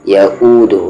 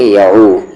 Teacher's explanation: يؤوده حمزہ ہے bottom throat سے، یعودہ نہ کہ یعو، یہ غلط ہو جائے گا کیونکہ وہ عین ہے.